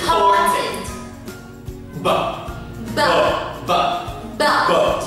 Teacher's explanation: Khi các bạn nói âm B, các bạn phải đặt tay trái lên cổ họng để kiểm tra rằng dây thanh quản của mình có rung hay không, bởi vì đây là một phụ âm hữu thanh. Và B là một cặp âm, một là vô thanh, hai là hữu thanh.